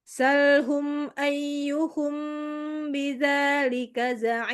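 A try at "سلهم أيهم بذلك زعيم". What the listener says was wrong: Nah, ini coba ditinggikan. Salhum ayyuhum bidzalika za'im. Bidzalika za'im. Tinggi lagi. Dzalika. Salhum ayyuhum bidzalika za'im. Za'im. Dari zalikanya itu juga ditambahkan.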